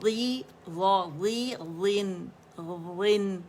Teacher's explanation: غن غن غن جبڑا کھلے گا. غن نون باریک ہے غا موٹا ہے.